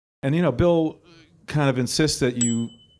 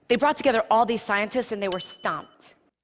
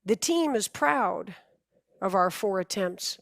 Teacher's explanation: Your brain may automatically perceive that a T is being pronounced, but I promise you, in all of these examples, the T sound has been dropped. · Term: rule of 3